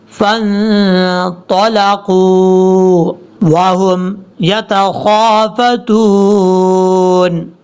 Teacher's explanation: طا حروف مستعلیہ میں سے پر پڑھا جائے گا